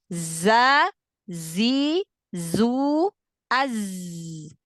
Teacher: Sifatul huruf sofir pada huruf zai itu dia khas seperti suara lebah.